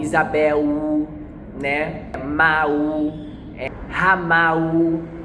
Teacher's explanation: esse U no lugar do L faz com que ele não entenda o que você está falando